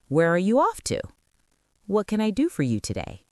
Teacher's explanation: information questions, who, what, where, why, have a falling intonation